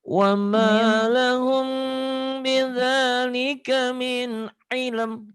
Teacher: humnya karena mim mati ketemu ba, ikhfa syafawi, oh iya, agak ditahan